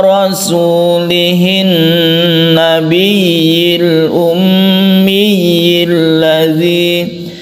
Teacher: Di sini ada 2 tasydid ya yang harus kita tekan, ya-nya itu kemudian kita berkasroh, ya-nya ya, sama-sama berkasroh. Kemudian sebelum ya ini ada gunnah, yaitu nun yang bertasydid dan mim yang bertasydid